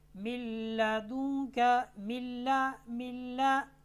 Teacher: नून साकिन और नून तनवीन के बाद अगर लाम और रा आ जाए, यहाँ पर नून के बाद लाम आ रहा है तो नून को लाम के साथ मिला देंगे, ऐसा मिलाएंगे कि गुन्ना नहीं होगा।